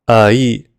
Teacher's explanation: Ai is simply uh and E put together. If you sound that out, a E becomes a. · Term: compound vowel